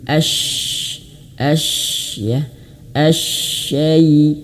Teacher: huruf syin itu dimiliki sifat tafasyi, mengalir nafas dan angin. As anginnya bertebaran di dalam asyai.